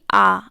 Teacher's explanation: आ जो है ना वो जीभ के एकदम निचले यानी लास्ट वाले भाग से निकल के एकदम अंदर से पीछे से निकल कर के आएगी, और पश्च का मतलब होता है पीछे, ठीक है ना। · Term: पश्च स्वर